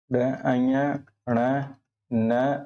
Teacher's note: ये जो पांचवा वर्ग पांचवा वर्ण होता है ड अञ ण न और म इन्हें जो है नासिक के वर्ण कहा जाता है